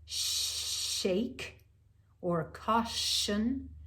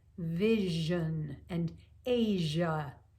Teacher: and with the vocal folds coming in on a pitch now go back to the sh in shake or caution and then add the voice and you have like vision and asia